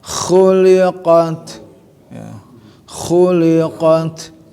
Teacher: kha harus ada getaran ngoroknya